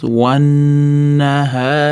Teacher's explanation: Nunda tashtidli kelganligi uchun ozgina g'unna qilib ushlab turamiz, wannahari, xni cho'zamiz, undan keyin mat kelyapti.